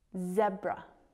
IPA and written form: ˈzebrə (zebra)